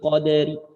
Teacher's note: Kalau ingin dibaca dengan raum qadari, maka ri-nya dibaca sepertiga harokat pelan saja, boleh. Itu dua cara yang diperbolehkan.